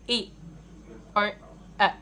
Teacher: To produce front vowels, our tongue is pulled to the front in a way that the tip of the tongue is touching the back of our bottom tip. Also, the highest part of the tongue is the front part when we produce the sound